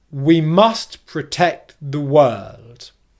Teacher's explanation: using an unstressed, weak pronunciation of the word the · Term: weak form